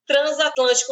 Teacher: por que este S aqui do prefixo trans tem som de z tem o fonema Z